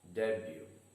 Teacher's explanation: the stress is on the first syllable day and the letter t is silent